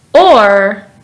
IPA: ɔːr